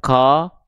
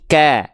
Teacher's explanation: Dari huruf kaf ini kan kafnya berharokat fathah, maka dibaca tidak ko, tidak ki, tidak ku, tapi ka. Jelas vokal a-nya, jelaskan kadar tipis vokal a-nya ya. Maka dibacanya bukan ko, tapi ka.